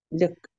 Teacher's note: The short U says same sound as schwa.